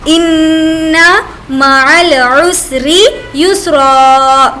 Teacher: ان یہاں پر نون پر تشدید ہے اس لیے ہم غنہ کریں گے. ان مع العسر یسرا، جو میں نے آپ کو قاعدے میں ایکسپلین کیا تھا کہ اگر دو زبر ہوں گے تو وہاں پر ایک زبر ساقط ہو جائے گا.